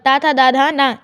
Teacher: चौथा है त वर्ग, ता, था, दा, धा, ना, ये दांतों का स्पर्श करते हैं।